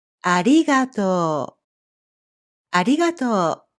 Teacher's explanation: The English R sound doesn't actually exist in Japanese. The Japanese la, ri, ru, re, ro sounds are somewhere between R and L, but not exactly either one.